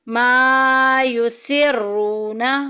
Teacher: یسرون میں دیکھیں واو ساکن پیچھے پیش واو مدہ کا قاعدہ جاری ہو رہا ہے، ایک الف کے برابر لمبا کریں گے